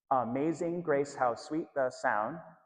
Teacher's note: The text is written with a meter or syllable count of 8686 and a recurring unstressed stressed syllable pattern.